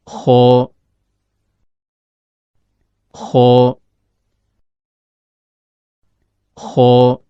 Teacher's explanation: Perhatikan gambar animasi berikut. Huruf kho keluar dari ujung tenggorokan, yaitu berada antara langit-langit atas bagian belakang dengan akar lidah.